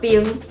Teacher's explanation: 咱就当知影第1条变调会变做第7条